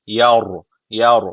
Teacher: ra harfi cezimli öncesindeki harf üstten bağlandığı için ra harfi burada kalın okunması gerekiyor